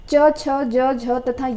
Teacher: च, छ, ज, झ तथा य व्यंजनों का उच्चारण तालु से होता है। इस व्यंजनों को तालव्य व्यंजन कहते हैं